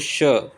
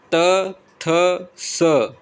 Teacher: श का उच्चारण स्थान तालू है त थ स का दंत है